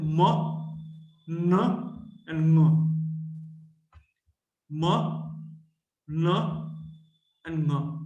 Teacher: Now, the oral cavity is closed and the air is coming out through the nose. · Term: nasals